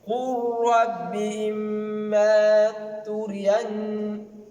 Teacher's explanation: On n'a pas utilisé, vous avez vu, on a négligé le lam et on a lu le ra tout en mettant un shadda dans le ra. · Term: idgham